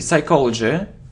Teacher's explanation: So psychology, we don't pronounce P